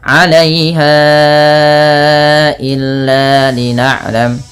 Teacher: Panjangkan bunyi ha yang ditandai dengan tanda pedang kecil seperti ini dan warna pink bertemu dengan hamzah setelahnya. Maka ini wajib dipanjangkan 4 harakat pada lafal bunyi ha atau 5 harakat karena ia ada hukum tajwid berupa mad jaiz munfasil.